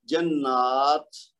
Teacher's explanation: اس کو تا کی آواز سکون کے ساتھ جب ادا کریں گے تو اس میں ہمس ہوگا